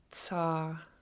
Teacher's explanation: with your tongue at the top of your back of your top front teeth and go into the S.